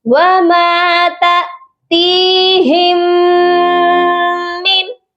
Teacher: میم مشدد پر غنہ ہوتا ہے لازمی۔ وَمَا تَأْتِيهِم مِّن، اور اس نون ساکن پر صرف اظہار حلقی ہوگا کیونکہ آگے حروف حلقی ہے۔